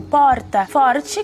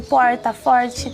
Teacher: se fala tanto o R chamado de TEP, que é tipo porta, forte, quanto o retroflexo, que é o caipira, o porta, forte.